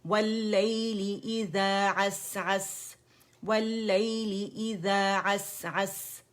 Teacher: دونوں جگہ سین ہے، واضح پڑھیں گے. ٹھیک ہے، اس کا رخاوہ، اس کا حمز، اس کی سیٹی واضح کریں گے